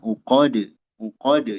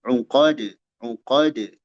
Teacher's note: Kalau waqfan, kalau berhenti di sana, maka dikolkolahkan dal ininya. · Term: qalqalah